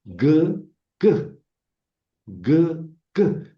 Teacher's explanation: si pronuncian K, se pronuncia exactamente en el mismo lugar que la G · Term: gutural